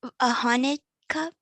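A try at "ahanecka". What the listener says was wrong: So, ahanechka. The C is a ch sound.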